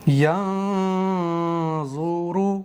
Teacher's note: یہاں ظا ہے، ظا بھی حروف مستعلیہ میں سے ہے، موٹا کر کے پڑھیں گے